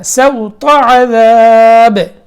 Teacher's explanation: سوط سین باریک طا موٹا